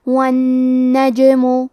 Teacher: کلمت والنجم میں حرف نون کی تشدید کو ظاہر کریں گے کیونکہ جیم پہ جزم ہے لہذا ہمیں جیم کو قلقلہ سے پڑھنا ہے اور قلقلہ کا معنی ہے حرف ساکن کو ہلانا تو ہم جیم کو ہلاتے ہوئے یہ کلمہ کو پڑھیں گے